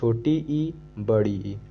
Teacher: हमारे जीभ जो है तालू में सड़ते है उसी को हम क्या कहते हैं तालव्य स्वर